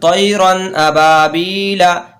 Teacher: تو ہم نے بتایا آپ کو کہ حروف حلقی کے بعد اگر کوئی حرف آ جائے گا تو اس جگہ جو طیرن طیرن میں جو رن میں یعنی کہ نون کی جو آواز آ رہی ہے اس نون کو ہم ظاہر کر کے پڑھیں گے